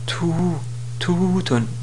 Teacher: La voyelle longue prolonge la dhamma pour produire le son ou